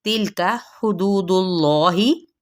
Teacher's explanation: दू पे मद्दे असली बिल वाओ और इसमें जलाला पुर पड़ा जाएगा।